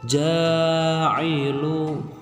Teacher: huruf ja dibaca panjang 2 harokat menjadi ja'ilu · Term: mad asli